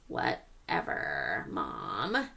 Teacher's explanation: letting my voice get scratchy, is known as vocal fry